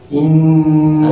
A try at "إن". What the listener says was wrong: أيوة، افتح شفتيك، لأن هذا الحرف النون لا علاقة للشفاه به، هو من هنا واللسان فوق بس، هذا خطأ كثير، إخواننا المصريون يكتبون أطلق أسرى الشفتين، أطلق أسرى الشفتين، كأنها الشفتين مأسورة، أسير، أسير حرب، فهم؟ أطلق أسرى الشفتين. كثير من الناس لو تلاحظون في النون المشددة يبغون الشفاه. إن لا، إن افتح، إني أسكنت من ذريتي بواد غير ذي زرع، قف على زرع حتى أسمع.